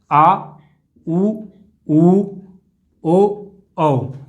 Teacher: जीभ का पिछला भाग हमारा क्रियाशील होगा, वो हमारे पश्च स्वर होंगे